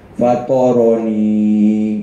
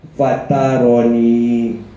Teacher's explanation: Itbab ni tebal. Awak kena tebalkan huruf to tu. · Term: Sifat itbab